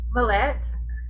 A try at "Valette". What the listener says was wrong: Valette. Oh, accent on the wrong syllable.